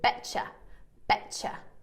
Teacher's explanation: when we join a t- sound and a y sound, bet you, we join it together as part of connected speech and we make a ch sound